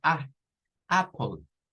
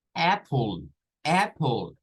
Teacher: es un sonido especial es el sonido corto es una mezcla entre una a y una e